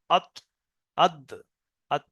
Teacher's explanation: জিভের আগা সামনের উপরের দুই দাঁতের গোড়ার সাথে লেগে উচ্চারণ হয় ত, দাল, তা।